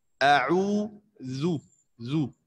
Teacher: इसको ज़ाल बारीक हुरूफ में से है और इसका ज़म्मा जो है वो मारूफ अदा होता है